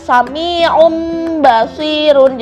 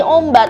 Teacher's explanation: Jadi nun sukun atau tanwin bertemu dengan huruf ba aja, dan dibacanya itu seperti huruf mim. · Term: iklab